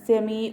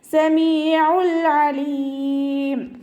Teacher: തൊണ്ടയുടെ മധ്യഭാഗം സൗണ്ടിന് ഹംസയുടെ സൗണ്ട് ആയി പോകാതെ നോക്കുക സമീ എന്നായി പോകരുത് സമീൽ അലീം കൽക്കല ലെറ്റർ ആത്തതുകൊണ്ട് ഹഫ് സുക്കൂന് കൊടുക്കുക